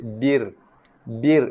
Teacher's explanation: Ra nipis sebab ra mati sebelum dia baris bawah.